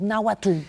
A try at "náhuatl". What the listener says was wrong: Está mal porque lo estás pronunciando en español. Entonces yo siempre decía, para la gente que nos escucha, cuando digan náhuatl, pongan arriba de la T, arriba una L chiquitita.